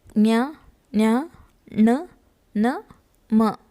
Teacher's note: ಮೂಗಿನ ಸಹಾಯದಿಂದ ಉಚ್ಚರಿಸಲ್ಪಡುವ ಅಕ್ಷರಗಳಿಗೆ ಅನುನಾಸಿಕಗಳು ಎಂದು ಕರೆಯುತ್ತಾರೆ.